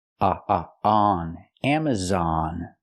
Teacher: We have a stress on the first and third syllable